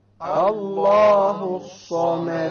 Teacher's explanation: It's a solar letter. The sad is a solar letter, which means we drop the lam when we have the alif lam there.